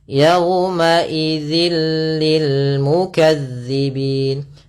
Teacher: Yaitu idgham yang kita baca tanpa disertai dengan gunnah. Maka cara membacanya yaitu suara tanwinnya masuk ke huruf lam dan nunnya suara nunnya hilang. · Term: idgham bila gunnah